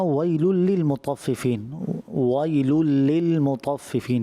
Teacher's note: جو لام ہے اس پر تھوڑا صرف 2 حروف کی مقدار ٹھہرنا ہوتا ہے، مگر آپ کی کچھ زیادہ مقدار ٹھہرنا محسوس ہوا، جیسے ویل للمطففین الذین اذا اکتالوا علی الناس یستوفون، تو ویل لل کریں گے یا اس طرح جو ہے وہ واضح نہیں ہو پائے گا تو اس کو غلطی کہا جائے گا۔